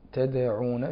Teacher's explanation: الدال الساكن تدعون فيه القلقلة، والنون الساكنة قبل الدال حكمها الإخفاء.